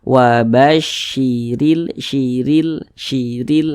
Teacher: huruf ro dibaca tipis dibaca tarkik sehingga pangkalisan kita itu tidak naik terangkat ke atas jadi r-nya · Huruf ro yang memiliki tanda baca kasroh nih, baris satu ke bawah nih namanya tanda baca kasroh atau harokat kasroh. Ada huruf ro yang memiliki harokat kasroh, maka huruf ro dibaca tipis, dibaca tarkik, sehingga pangkalisan kita itu tidak naik terangkat ke atas.